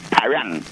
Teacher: Because in Spanish, when you remove the DA and you say P-A-R-A-N, the N at the end of a Spanish word sounds like NG